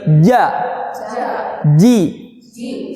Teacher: lisan kita yang bagian tengah ini nempel ke langit-langit nomor 3 atau langit-langit keras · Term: huruf Jim